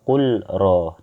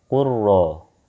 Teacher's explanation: Bukan dibaca kul ro, tapi kurro. Nah, kita masukkan langsung ke ro ini.